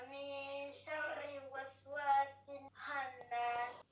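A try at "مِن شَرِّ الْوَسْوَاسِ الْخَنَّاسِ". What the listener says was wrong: Sharril. Ril. Ça doit donner ril. Parce qu'il y a une lettre lunaire. On passe du ri au al. Tu dois pas lire min sharri waswasi. C'est min sharril waswasil khannas.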